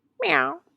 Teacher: So that's going to infuse more nasality in the tone. And then eow moves the tongue from a high position to a mid to low position. That tongue movement is what facilitates the combination of brightness and darkness. · And so meow, the first sound is an M, right? So that's going to infuse more nasality in the tone. And then eow moves the tongue from a high position to a mid to low position.